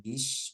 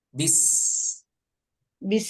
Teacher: Jadi ketika membaca bismillah itu tidak ada sh-nya, tidak sh-nya, tapi bis, gitu ya. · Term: huruf sin